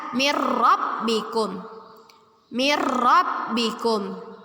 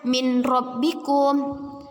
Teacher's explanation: Setelah kita belajar, bacaan yang benar ialah mir rabbikum. Dengan kita masukkan bacaan nun mati ke dalam ro, menjadi ro-nya bertasydid. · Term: idgham bila gunnah